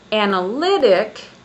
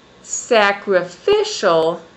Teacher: We can move on to another set of words with four syllables. And in these four syllable words, the stress is on the third syllable. For example, if I say analytic, I have the stress on the third on the third syllable.